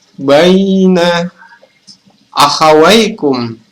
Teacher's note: Baina adalah mat lain karena ya sukun didahului oleh huruf berharokat fathah. Dibaca panjang selama 2 harokat.